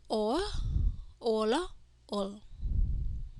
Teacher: the second series consonant have or sound, which is also the invisible vowel for the second series consonant. Okay, so or, ola, ol.